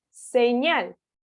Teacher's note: La sílaba tónica recae sobre la última posición. Nuevamente, estamos hablando de una palabra aguda.